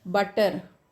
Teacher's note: Additionally, T can also be produced differently according to dialect. Many dialects of English have a glottal stop in the middle of the word.